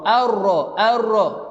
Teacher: Nun ini sudah tidak ada bunyi dah. Kita terus masuk kepada huruf ra.